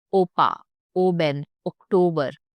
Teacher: So just no, just like in English you say. O, round lips into perfect O shape and hold it. No gliding, just clean pure sound. · German O is a pure steady vowel. Say O and freeze your mouth. Don't let it drift into aw like English speakers often do.